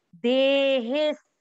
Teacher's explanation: अवग्रह के कारण आपको हे की मात्रा को लंबा खींचना है और लंबा खींचते हुए देखिए अवग्रह के बाद में आधा स लिखा हुआ है, मात्रा के अंदर है स, वो आधा स अपन हे को खींचते हुए बोलेंगे।